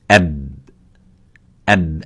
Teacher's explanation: It has a strength, which is the quality of shidda. The strength is by stopping that sound. So by saying ab, ab, as you can see, the lips are meeting each other, but with a strength slightly different than a mim.